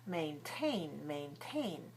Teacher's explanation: It's stressed on the second. The second one begins with a T sound, so we let out a strong puff of air like this.